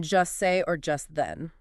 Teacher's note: instead of hearing the distinct hard T in just, you hear the words merge into one sound